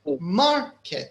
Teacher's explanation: So mar is louder than kit. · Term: stress